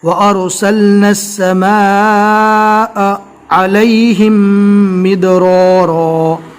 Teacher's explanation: عین کو برابر حلق سے ادا کیا جائے گا